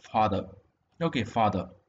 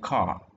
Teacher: so it is the R sound in RP is more back than the GIE equivalent R